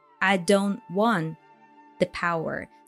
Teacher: So there is a stop T, which often happens, right, in connected speech.